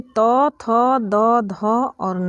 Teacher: तो इनका जो उच्चारण स्थान होता है वह दंत यानी कि दांत होता है। यानी कि जब भी हम लोग त, थ, द, ध और न पढ़ते हैं तो हम लोगों की जो जीभ होती है वो दांत से स्पर्श करने के बाद इसका उच्चारण करती है। तो इसको दंत व्यंजन कहते हैं और यह त वर्ग में आता है।